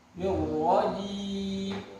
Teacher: Huruf ja di sini jangan sampai ada bunyi c.